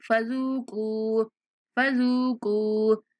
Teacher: زال کو نرمی سے پڑھتے ہوئے 1 سیکنڈ تک کھینچیں گے، کاف کو بھی 1 سیکنڈ تک کھینچیں گے